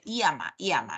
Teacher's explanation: confunde el sonido de la elle con el sonido de la Y en vez de decir ya llama dice yama yama no luego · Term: yeismo